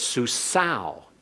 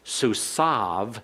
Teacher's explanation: of word and you'll hear in modern Hebrew this is susav they changed the wow to a consonant in modern Hebrew